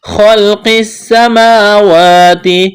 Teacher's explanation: خلق السماوات، خا کو موٹا کرنا ہے، قاف کو موٹا کرنا ہے، سین میں سیٹی کی آواز پیدا کریں گے، سین کو باریک کرنا ہے، کڑا زبر ہے، الف کے برابر کھینچنا ہے، تا کو باریک کرنا ہے۔